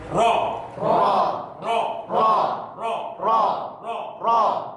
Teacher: Kemudian yang kedua adalah pembatasan pengulangan ketika kita mengucapkan ro. Itu hanya berapa? Dua kali getaran. Tidak boleh lebih dari 2 kali. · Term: sifat takrir